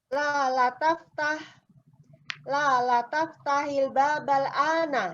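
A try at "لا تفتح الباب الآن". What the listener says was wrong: Tapi intonasinya lebih kencang ini. Harusnya yang marah-marah kayak cocok ini.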